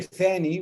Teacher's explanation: the voiceless um voiceless interdental fricative which exists in both uh traditional jordanian dialects and in standard arabic